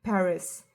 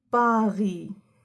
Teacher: In English, we have a bit of aspiration.